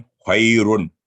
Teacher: अगर ये बगैर वक्त पढ़े खैरुन, तो फिर वो जब वक्फ नहीं करेंगे तो तनवीन के साथ इसकी आवाज थिक साउंड होगा, मोटी आवाज में पढ़ा जाएगा।